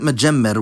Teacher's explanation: So now we'll look at majemmer, which effectively behaves the same with one difference. Just as the middle me is geminated in the infinitive, it's geminated in the non-past.